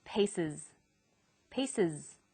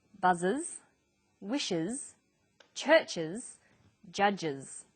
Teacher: the S on the end is pronounced Z because it followed an S sound